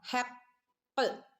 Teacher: ഖാഫ് കൽക്കലയുടെ letter ആണ്, സുക്കൂന് കൊടുക്കുമ്പോൾ full സുക്കൂന് കൊടുക്കണം കേട്ടോ